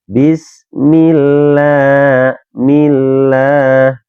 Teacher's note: apabila ada ee huruf yang berharakat kasrah kemudian bertemu dengan lafzul jalalah maka ini harus dibaca tipis. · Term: lam tarkik